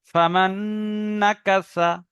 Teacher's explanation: এখানে নুন সাকিনের পরে নুন আসার কারণে নুনকে নুনের সঙ্গে মিলিয়ে একালিপ গুণনা হবে